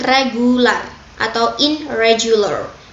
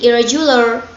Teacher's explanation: bunyi ini mengalami asimilasi oleh er secara penuh sehingga n-nya melebur menjadi er seutuhnya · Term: asimilasi total